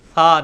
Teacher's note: سیٹی کی آواز کو اوائڈ کرنے کے لیے جو یہ زبان ہے, زبان کا جو اگلا کنارہ ہے, زبان کی نوک, وہ یہ جو اگلے دانت ہیں ان کے کنارے کے ساتھ ہلکی سی اندر کی طرف ٹچ کریں گے تو سیٹی کی آواز خود بخود ختم ہو جائے گی اور بڑی نرمی سے یہ لفظ ثا نکلے گا